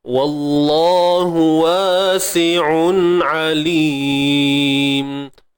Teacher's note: Sekali lagi kalimah Allah yang perlu ditebalkan pada lam tersebut. Lam pada kalimah Allah ni yang bersabdu ni ditebalkan disebabkan sebelumnya terdapat huruf yang berbaris atas.